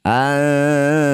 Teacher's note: Bunyi nun dengungkan dua harakat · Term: ikhfa aqrab